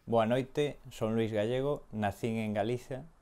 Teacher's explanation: he has the interdental fricative th. So this makes it a lot closer to Spanish when it comes to the pronunciation.